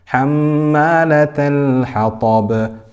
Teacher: This lam is sakina here. This is harf tawassut. So we continue the sound a little bit, but not to the extent of rakhawa.